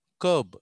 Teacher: రా అనే సౌండ్ మనం పలకూడదు